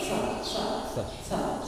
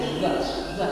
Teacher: Dia kayak tidak ada getaran karena dia huruf S. Cuman dikasih getaran di sedikit ada P-nya di depan.